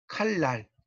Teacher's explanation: 앞에 리을 때문에 뒤에 있는 니은이 리을로 바뀐 거잖아요